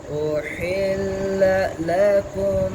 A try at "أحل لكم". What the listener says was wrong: लेकिन अब सख्ता बन रहा है ये तो ये भी नहीं सही। उहिल्ला लकुम